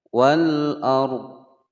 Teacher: huruf dhad ini masih terdengar ya ketika waqaf. Wal ar, ya masih samar terdengar.